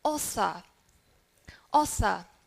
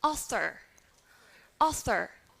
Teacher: in British English we don't usually pronounce the R sound if it is at the end of the syllable however we would pronounce the R sound in American English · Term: non-rhoticity